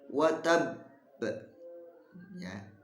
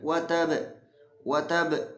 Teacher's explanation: huruf qalqalah di akhir yang kemudian ditasdid, maka ditahan dulu baru dipantulkan. Watab, ya. Kalau ada huruf qalqalah di sana ada tasdid dan menghadapi waqaf, ya, berhenti, maka cara membacanya ditekan dulu baru dipantulkan. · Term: qalqalah kubro